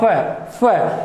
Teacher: तो ये फ जो है ओष्ठ से बोला जाएगा फ। तो ओष्ठ और दांत दोनों का प्रयोग किया जाता है, ये विदेशी वर्ण है।